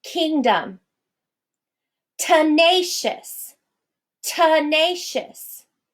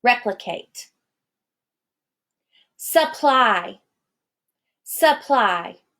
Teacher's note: all of those are written with the vowels A, E, I, O, or U, and even Y coming out as a schwa in the spoken version